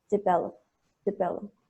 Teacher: It's between I and E, it's a schwa · Suena como una I, una E, una O. Es una vocal que no existe en español, pero es muy corta.